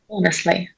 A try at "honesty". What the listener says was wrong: No sound li. Honest.